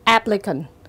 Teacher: từ applicant dấu nhấn rơi vào âm tiết thứ nhất